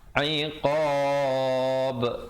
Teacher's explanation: diwaqafkan qalqalah kubra. Di situ ba-nya diberikan pantulan kadar 2, 4 atau 6 harakat.